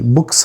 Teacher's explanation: ఇప్పుడు ఇది voiceless sound తర్వాత వచ్చిన ఎస్ కదా, మనకి వాయిస్లెస్సే వస్తుంది, సా వస్తుంది.